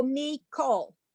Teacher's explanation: I think this one's the short one, and so the little T is called a Kamatz. And if it's the small Kamatz Katon, which is like the short one, it becomes pronounced like an O.